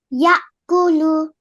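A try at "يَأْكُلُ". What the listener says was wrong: Amazing. Ya'kulu.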